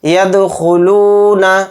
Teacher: دال کے اوپر جزم ہے دال کے اندر قلقلہ کریں گے